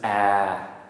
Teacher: a long vowel. Okay, with a long midtone.